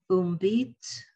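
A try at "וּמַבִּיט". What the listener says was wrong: Uma. There's a ma. Under the mem is a umabit.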